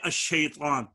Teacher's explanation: شین اپنے مقارب لام تعریف کا مدغم فی ہے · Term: ادغام